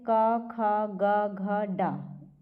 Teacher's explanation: क वर्ग में जितने भी आते हैं सब कंठ से उच्चारण होता है उसका